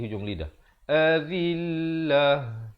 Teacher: Azil, zi di hujung lidah.